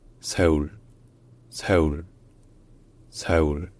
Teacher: C'est un L qui est rétroflexe, c'est-à-dire que la pointe de la langue est relevée vers le haut.